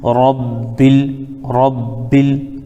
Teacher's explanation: تو یہاں پر الف کو ہم پڑھیں گے نہیں، ڈائریکٹ ہم لام میں ملا دیں گے، تو با لام زیر بل، ربل، ربل۔